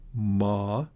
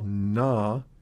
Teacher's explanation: Ma is bilabial, while na is alveolar.